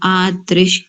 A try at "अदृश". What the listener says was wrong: आदश नहीं करेंगे आ नहीं अ अदृश अदृश